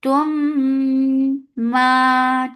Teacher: This is Idgham Shafawi. So, and Idgham Shafawi has a Akmal Gunna. So, keep the sound in your nose for a longer time. Tum ma 2 counts long.